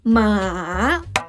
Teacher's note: The third tone, dips down and then rise.